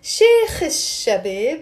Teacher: Notice how here I'm not pronouncing Sheikh Il Shabib because the letter Sheen is a sun letter. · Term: liaison